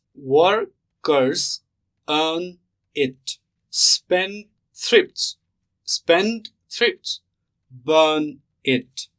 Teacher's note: the pattern is stressed, unstressed, stressed, unstressed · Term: trochee